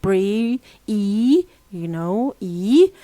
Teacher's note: There is a space between them because E is a vowel said with our mouth closed, and this is why F1 is low and is said with the front of our tongue. It's a front vowel, and this is why F2 is high, as we see, and there is a space between them.